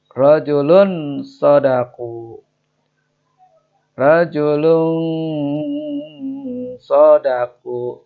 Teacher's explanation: Tanwin bertemu sod ya. Ditahan. Disamarkan. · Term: ikhfa